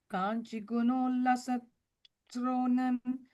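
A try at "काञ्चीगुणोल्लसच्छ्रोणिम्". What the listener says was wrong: The Kanchi is a long E, okay. Kanchi guno.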